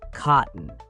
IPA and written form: ˈkɒʔn (cotton)